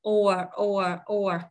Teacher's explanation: Âm O có dấu hai chấm làm O dài tròn môi. Âm R cong lưỡi lên. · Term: dạng strong